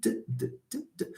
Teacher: you will feel that your tongue does not change its place. The tongue is in its natural place. It's on the alveolar ridge. All right? So t and d have the same place of articulation.